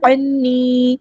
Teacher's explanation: عَنِّي، عین کو وسطی ہے لیکن زور سے ادا کرنا ہے. نون پہ غنہ زبانی ہو رہا ہے، 2 کاؤنٹس رکیں گے یہاں پہ. اور یا مد آئی 2 کاؤنٹس لمبا کریں گے.